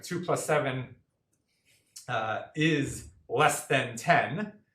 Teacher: there's only one S. Phonetically, no one pauses between 2 plus 7.